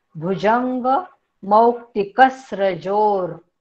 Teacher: मौक्तिक मधल्या क वर पण पुन्हा आघात येईल, कारण पुढे स्र हे जोडाक्षर आहे, म्हणून कसा होईल उच्चार भुजंग मौक्तिक स्रजोर।